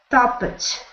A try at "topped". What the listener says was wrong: So that is the word topped. So it is a past tense. So you don't pronounce the ED like that. You pronounce it with like a little bit of a T or a D. Topped.